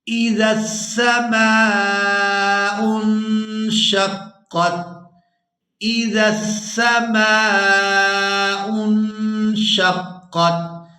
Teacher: یہاں نون ساکن پر اخفا کریں گے، آواز ناک میں جائے گی اور اس آواز کو کچھ دیر ناک میں رو کر رکھیں گے۔